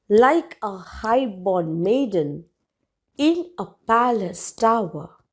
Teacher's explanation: so you're having a beat in the beginning and then an unstressed level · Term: trochaic beat